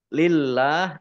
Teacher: Allahnya dibaca tipis dibaca tipis karena harakat di depannya kasrah